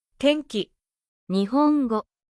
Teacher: when ん comes before か or が sounds, it becomes softer and more nasal.